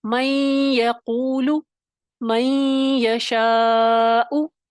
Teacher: نون کی صفت غنہ باقی رہی، نون کی آواز جو تھی وہ باقی تھی، ادغام ناقص ہو گیا، تام نہیں ہوا۔